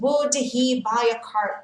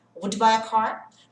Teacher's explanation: would he, o som do H vai sumir, tá, gente?